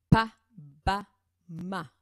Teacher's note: Donc, quand j'utilise les P, les B et les M, où est-ce que ça bouge, où est-ce que l'air est retenu? Par la pression des lèvres.